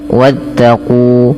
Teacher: pada lafal qu ada bacaan berupa mad thabi'i yang di mana kunya dipanjangkan dua harakat dan alif bila ditandai dengan sifir mustadir di atasnya maka alifnya dianggap tidak dibaca dan maka diwarnai di dalam mushaf ini yaitu diwarnai dengan abu-abu artinya dianggap tidak dibaca.